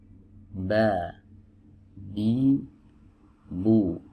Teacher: huruf ba ini adalah huruf yang keluar dari dua bibir ya yang dipertemukan